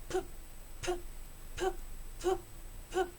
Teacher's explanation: No hay vibración. Este sonido es un sonido oclusivo. ¿Qué quiere decir? Que el sonido es producido por el golpe del choque bilabial.